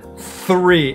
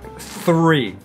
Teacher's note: Air, I'm still blowing out air here, but definitely my tongue is coming out under my top teeth, over my bottom lip, three, and then I pull it back, three.